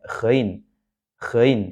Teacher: gain ini adalah huruf yang keluar di tenggorokan bagian atas di atasnya huruf Ain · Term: huruf gain